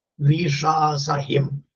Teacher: അടുത്ത പദം വിഷാസഹിം അന്തോദാത്ത പദമാണ്